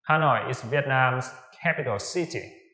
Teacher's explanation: chúng ta sử dụng ngữ điệu đi xuống